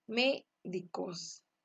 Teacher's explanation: la sílaba tónica está en la antepenúltima sílaba, mayor elevación de voz, y las otras dos restantes, su pronunciación es lineal, no hay mayor intensidad.